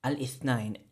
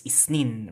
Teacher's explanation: that interdental, voiceless interdental fricative sound gets changed to a sibilant sound, right? The s, right?